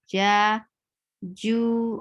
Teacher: when you engage makhraj for Jeem, then the middle of your tongue will be actually touching the upper palate.